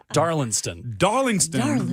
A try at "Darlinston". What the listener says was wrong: There's no G. Darlinston.